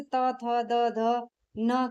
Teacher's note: ठीक है, तो त वर्ग जैसे त, थ, द, ध, न के वर्णों का उच्चारण दंत यानी दांतों को स्पर्श करके होता है, इसलिए इन्हें दंत्य वर्ण कहते हैं।